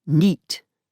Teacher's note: in the northeast, night is pronounced as neat